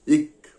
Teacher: அடி நாக்கை அடி அன்னத்தின் மீது பொருத்தி காற்றை மார்பிலிருந்து வெளியிட்டால் இக் பிறக்கும். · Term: வல்லின மெய்யொளி